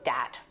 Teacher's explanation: that have persisted throughout generations th stopping so that might be using something like a d sound for where you see a written th